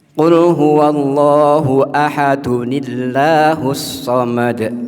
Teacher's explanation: maka tanwinnya itu nyambungnya maka diganti dengan Nun dengan Nun kecil